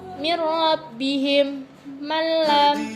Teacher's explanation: Idgham bila gunnah adalah apabila ada nun sukun dan tanwin bertemu dengan salah satu huruf lam dan ro, maka hukum bacaannya adalah idgham bila gunnah, yang membacanya dengan cara memasukkan dengan tanpa dengung